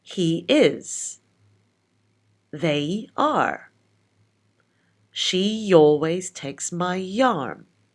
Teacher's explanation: we insert a y sound to join the vowels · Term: intrusion